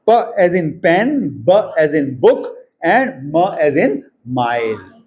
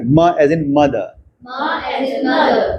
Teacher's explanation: दोनों लिप्स इस्तेमाल हो रही हैं। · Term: bilabial sounds